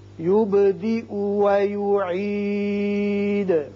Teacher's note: با ساکن ہے، اس کی صفت قلقلہ ادا کریں گے. یہ یا کے اوپر حمزہ ہے، حمزہ کے اوپر پیش ہے، حمزہ پڑھا جائے گا.